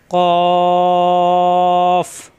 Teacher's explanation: কফ জিব্বার গোড়া থেকে, কা হবে না